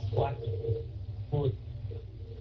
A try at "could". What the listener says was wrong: Could. Đừng có đọc nặng qua could. Không phải could mà là could. Đọc trải ra, đọc nhẹ nhẹ thôi. Could.